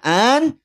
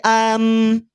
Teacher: Masuknya tanwin atau nun sukun pada huruf mim sehingga yang semula bunyinya an dia akan berubah menjadi am. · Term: idgham